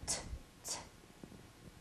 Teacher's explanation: It's a quiet sound, right? Because I can't feel the vibrations in my throat when I make the T sound.